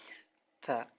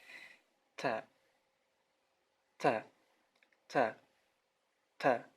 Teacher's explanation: Ada hamas namanya. Hamas adalah seperti ada sedikit sekali angin yang keluar ketika kita menyebutkan huruf ta, ya. Ta, seperti ada angin atau sedikit huruf S di ujungnya.